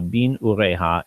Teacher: But the beginning of a word, what you'll have, instead of having two sets of shva vowels, the first one will just collapse into this chirik, which is the E sound